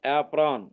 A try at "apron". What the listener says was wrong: ఏప్రాన్. ఉండు యాప్రాన్ కాదు, ఏప్రాన్.